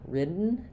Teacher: for written, you're going to hear the unreleased T is shorter